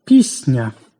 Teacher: Під впливом наступного м'якого тверді стають також м'якими, як у слові «пісня», «ні-ня». М'який і своєю м'якостю впливає на попередній сусідній «си». Тому ми чуємо «пісня».